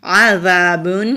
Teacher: عذاب، عین حروف حلقی ہے، حلق سے ادا کریں گے اور ذال نرمی سے پڑھیں گے۔ ذال کو جب ہم ادا کرتے ہیں تو زبان کی ٹپ اوپر والے سامنے کے جو دو دانت ہیں وہاں پر ٹچ ہوتی ہے نرمی کے ساتھ، تو پھر ذال کی آواز آتی ہے۔